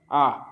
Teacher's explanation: নিচ অবস্থান অনুযায়ী কি হচ্ছে এই আ হচ্ছে নিম্নে আছে আ দেখো জীব একেবারে যেন সবাসনে শুয়ে আছে আ নিচে আছে তাই এটাকে নিম্ন বলা হয় তো আ পেয়ে গেছি আর আমাদের কি চাই আর বিবৃত মানে